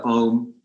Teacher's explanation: Really nasalize the last part that's represented with an M with a dot underneath it